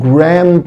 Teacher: لما اجي انطق grandpa بخفي حرف الدي، يعني الدي هنا مش هنطقه